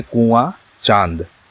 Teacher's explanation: नाक से निकल रही है अनुनासिक अनुनासिक का चिन्ह है चंद्रबिंदु अनुनासिक के उच्चारण में हवा नाक और मुंह दोनों से निकलती है